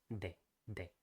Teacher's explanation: It's actually more dental. So we have the D pronounced with touching the back of the top teeth